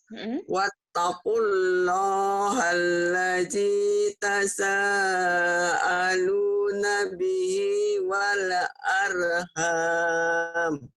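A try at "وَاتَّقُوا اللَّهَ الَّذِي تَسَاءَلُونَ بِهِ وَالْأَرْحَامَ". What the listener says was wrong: Jadi wal jangan ada e-nya. Wal arham.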